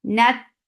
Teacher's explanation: For fatha open your jaws and then attach with ta. Ta will get sifa of shidda. There's no flow of sound.